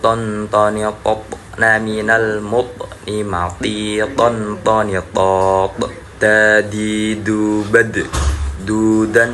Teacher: bagian thful lisan pangkal gigi seri depan atas. Itu makhraj dari huruf th, dal, dan ta.